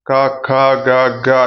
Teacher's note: 'క' సమూహాన్ని 'కంత్యాలు' (వెల్లార్లు) అని అంటారు. కంథ్యాలు గొంతు నుండి ఉచ్ఛరించబడతాయి.